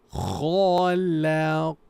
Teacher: Kha is heavy. Kha. La. Light. Qa. Heavy. Na. Light.